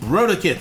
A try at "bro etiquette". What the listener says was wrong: Bro etiquette. You're saying it a little faster. It sounds like you're saying brodicate instead of bro etiquette. You're coming in a little hot.